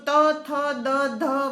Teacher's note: જીભનો અગ્રભાગ ઉપલા દાંતને અડકે છે અને ત્યાં હવાનો અવરોધ થાય છે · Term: દંત્ય વ્યંજનો